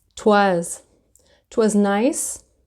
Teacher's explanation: Sometimes you'll hear that it was will turn into twas.